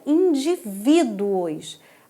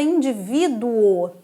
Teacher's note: uma palavra paroxítona terminada num ditongo crescente, ó, vai da semivogal para vogal